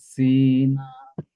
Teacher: সিন উচ্চারণ করার সময় আমরা আমাদের জিহ্বার মাথাটা নিচের দুই দাঁতে গোড়ার সাথে লাগাবো